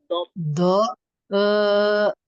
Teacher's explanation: Do Terus tepi apa ya, tepi lidah. lidah di bagian sisi lidah bertemu dengan geraham bisa kiri kanan atau kedua-duanya